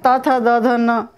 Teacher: सब बोलने में दांत पे जीभ टच हो रही है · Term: दंत्य वर्ण